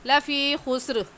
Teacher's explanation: خسر میں جب ہم وقف کریں گے تو یہ را موٹی ہوگی، کیونکہ ملا کر پڑھنے کی صورت میں را کے نیچے زیر ہے تو را باریک ہوگی، اور وقف کریں گے تو را موٹی ہوگی